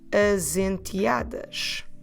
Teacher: because as ends at S and enteadas starts with a vowel, I can and I should run these two words together